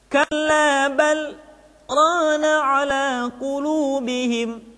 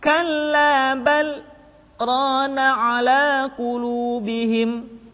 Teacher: Kalimat bal berhenti sejenak, tahan nafasnya selama 2 harokat, kemudian dilanjutkan kembali.